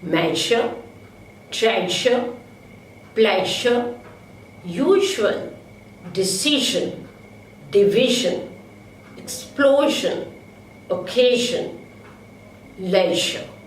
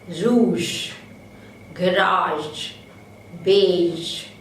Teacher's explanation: The vocal cords vibrate during the articulation of j. So it is a voiced palato-alveolar fricative.